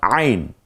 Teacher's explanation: কণ্ঠনালীর মধ্যখান থেকে উচ্চারিত হয় আইন